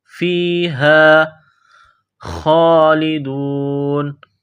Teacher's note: فیہا گول ہا ہے چشمے والی، منہ سے ہوا نکالنے کی طرح اس کو صرف پڑھتے ہیں۔ فیہا خالدون، خا کو موٹا کرنا ہے، ایک الف کے لمٹ میں کھینچنا ہے۔